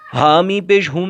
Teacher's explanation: حامی پیش ہم، میم ساکن ہے، میم ساکن کے بعد میم آ رہا ہے اس لیے ادغام شفوی کا قاعدہ ہوگا۔ میم کے اوپر تشدید ہے، میم مشدد ہے اس لیے یہاں پر گنہ بھی ہوگا